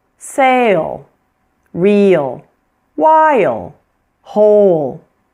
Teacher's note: So when the L follows a long vowel, we almost add an extra syllable.